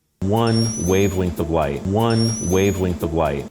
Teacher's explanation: la L del inglés estadounidense siempre tiene un poquito de O o de W. Por ejemplo, la palabra light suena un poco como white para mis oídos.